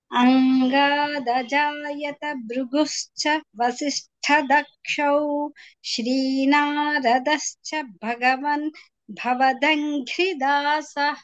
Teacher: భవదంఘ్రి అన్నప్పుడు దకారానికి కాకుండా ఘ అక్కడ ఒత్తు చెప్పాలి